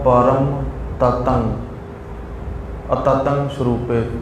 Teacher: ਨੱਕ ਦੇ ਵਿੱਚ ਹੀ ਆਵਾਜ ਆਵੇ ਟਿੱਪੀ ਦੀ